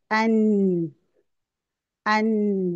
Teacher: अब नून की आवाज भी नाक में जा रही है